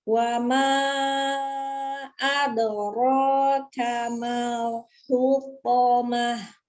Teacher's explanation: ketika dia dhammah itu dia monyongkan dulu hu, ketika dia fathah walaupun itu huruf yang tebal tetap dibuka.